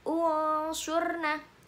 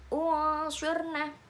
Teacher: ini ada nun sukun bertemu dengan shad, didengungkan. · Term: ikhfa